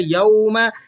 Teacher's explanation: وجوہ، وجوہ یومئذ، یوم، یہاں بعض لوگ جھٹکا لگا دیتے ہیں، تو آپ نے یہاں جھٹکا نہیں لگانا ہے۔ یوم، یہ واؤلین ہے، واؤلین کو نرمی سے ادا کیا جاتا ہے، جھٹکا نہیں لگایا جاتا۔